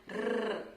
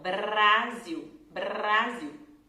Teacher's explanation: esse som de R, que a letra R vibra atrás dos dentes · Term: R que vibra